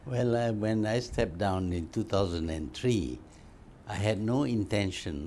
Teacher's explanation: you can hear his intonation and malay english goes up and down up and down up and down a lot more than what we hear with canadian or north american or british english